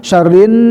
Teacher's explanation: 3 syarrin, nah juga sama al-khaisum, nun bertasdid guna musyaddadah, masuk juga kelompok al-khaisum, rongga hidung, tahan juga hidungnya